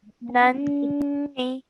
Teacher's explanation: We're holding the sound of the noon because of the sound of noon gunna.